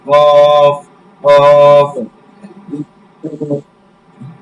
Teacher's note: কফটা হচ্ছে কলকলা করে একদম হলকের শেষ হতে, হলকের শেষ হতে কফ কফ।